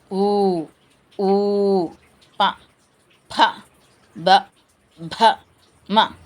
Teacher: ఓష్ట్యములు అంటే పెదవుల నుండి పుట్టునవి అంటే పెదవుల సహాయంతో పలికేవి ఊ ఊ ప భ మ ప్రతి ఒక్క అక్షరం కూడా పెదవుల సహాయంతో